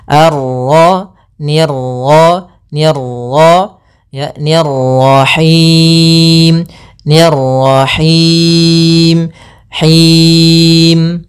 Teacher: Untuk pantulan dalam huruf ra itu cukup sekali saja, karena sifat ra ada sifat takrir, yaitu pengulangan, tapi hanya sekali.